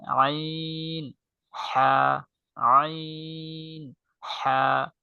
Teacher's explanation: কণ্ঠনালীর মধ্যখান থেকে উচ্চারিত হয় আইন, হা